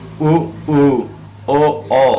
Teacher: पार्श्व स्वर ये सबसे पीछे से निकल रहा है